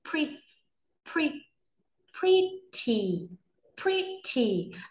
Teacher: Đầu tiên từ này gồm có hai âm tiết, trọng âm rơi vào âm đầu tiên. Với âm đầu tiên mọi người sẽ nhấn mạnh, âm đằng sau thì sẽ đọc nhẹ đi ạ. Ở đây mình có phụ âm ghép là pr, pr. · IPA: /ˈprɪt.i/